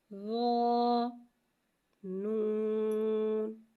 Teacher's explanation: رو حرف مستعلیہ لہذا سے ہم موٹا پڑھیں گے، رو کی آواز حلق سے ادا ہوگی۔